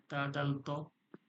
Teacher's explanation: জিহ্বার আগা সামনের উপরের দুই দাঁতের গড়ার সঙ্গে লেগে উচ্চারণ হয়